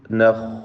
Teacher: ഖാഇന് തഫ്ഖീം കൊടുക്കണം, തടിപ്പിച്ച് ഖാഇനെ ഉച്ചരിക്കുക